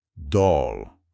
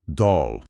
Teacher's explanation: geralmente é um O mais aberto e mais para trás na boca. Parece que o nosso O em só, mas talvez um pouco mais arredondado.